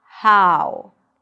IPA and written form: haʊ (how)